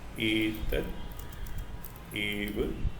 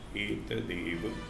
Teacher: ta is unvoiced. A being a vowel is voiced because all vowels are voiced sounds. So ta also becomes voiced and becomes the.